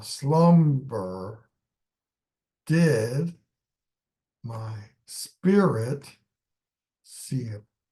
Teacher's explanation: you have a line with 8 syllables with alternating stress. So, doesn't have any stress on it, but slumb has a strong stress.